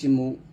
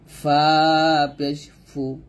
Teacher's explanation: আর এখানে আরেকটা কথা মনে রাখেন, সেটা হচ্ছে এই যে ওয়াওয়ের মানে পেশ আর কি, পেশ আপনি যেই কোনো হরফের সাথে উচ্চারণ করেন না কেন, পেশ উচ্চারণ করতে গেলে আপনার ঠোঁট গোল হবে